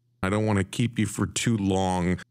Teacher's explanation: do you hear that stress on the word keep and to · the words are slightly stretched out longer and used with emphasis do you hear how the music or the intonation falls through